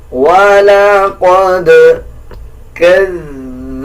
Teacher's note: ذال کو نرم پڑھیں گے۔ اکثر لوگ اس میں زا پڑھ دیتے ہیں، زا کا پڑھنا غلط ہے، بلکہ ذال پڑھا جائے گا نرم۔